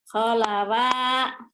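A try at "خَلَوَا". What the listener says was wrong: Bukan. Ko-nya yang panjang Bu. Kolawa. Yang ini Bu. Bukan Bu. Ini bukan alif, ini lam. Kolawa.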